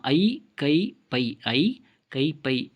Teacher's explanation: ஐகார எழுத்து தனித்து வரும் இடங்களில் தனக்குரிய 2 மாத்திரை அளவில் முழுமையாக ஒலிக்கிறது. ஐ கை பை இந்த மாதிரி தனித்து வரும் இடங்களில் 2 மாத்திரை அளவு முழுமையாக ஒலிக்கும்.